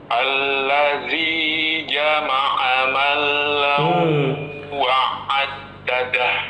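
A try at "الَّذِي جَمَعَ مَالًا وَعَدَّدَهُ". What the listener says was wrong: Malau bukan mala. Ma-nya panjang. Alladzi jama'a malau, gitu. Ma-nya panjang. Alladzi, lalu jama'a, lalu ma, betul? Nah, ma-nya di situ panjang atau pendek? Panjang. 2 harokat. Lalu lamnya ada tasdidnya tidak Bapak? Nggak ada.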